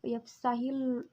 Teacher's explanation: lafaz Allah didahului oleh huruf hijaiyah ha berharakat kasroh cara membacanya itu tipis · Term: hukum tarqiq